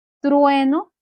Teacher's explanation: Que el acento está en la penúltima sílaba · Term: palabras graves